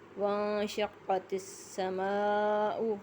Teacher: حروف مدہ اور حمزہ ایک کلمے میں موجود ہیں تو یہاں مد متصل ہوگا۔ مد متصل کو 3 الف کے برابر کھینچ کے پڑھا جاتا ہے۔